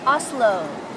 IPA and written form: ˈɒzloʊ (Oslo)